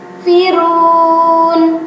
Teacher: ini namanya mad arid disukun, yaitu mad yang berada di akhir kalimat. Sama dibacanya juga 2 ketukan ya